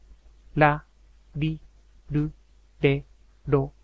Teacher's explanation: Although written in Romaji using an R, the sound is closer to a light L sound, almost approaching a D sound. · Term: The R sounds